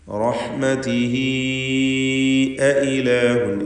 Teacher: റഹ്മതിഹി എന്നിടത്ത് വഖഫ് ചെയ്യുമ്പോൾ ഹായിന് സുക്കൂൻ നൽകി റഹ്മതി എന്നാണ് വഖഫ് ചെയ്യുക. ചേർത്ത് ഓതുമ്പോൾ അവിടെ റഹ്മതിഹി അഇലാഹുൻ എന്ന് മദ്ദുസ്സിലത്തിൽ കുബ്ര പുതിയതായി ഉണ്ടായിത്തീരുന്നതാണ്